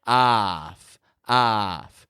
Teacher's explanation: on the podcast we call it a short o AF AF those FS are just kind of fading they're weak on the ending we don't give a lot of power to the consonant sounds